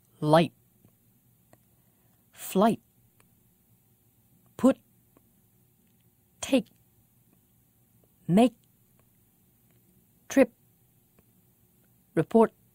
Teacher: instead of letting the air pass through the lips or teeth we stop the air very quickly at the voice box the adam's apple the glottis · have this glottal stop at the end of the word light can you hear the throat close for a moment at the end